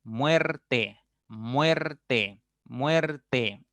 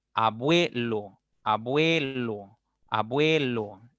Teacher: tu boca se abre un poquito más cuando tú pronuncias la vocal abierta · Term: diptongo creciente